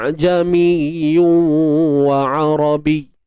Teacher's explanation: dibaca dengan tahqiq hamzah pada mulanya, kemudian baru tashil